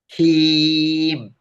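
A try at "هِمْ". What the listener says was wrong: Masih masih masih hidung. Nah, ini latihannya dipanjangin aja dulu. Kalau masih masuk hidung, dicari-cari. Hei, masih masuk hidung kan?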